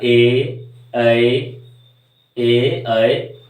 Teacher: कंठ तालव्य कंठ और तालू का मेल होकर के ये वर्ण निकल रहा है ये ध्वनि निकल रही है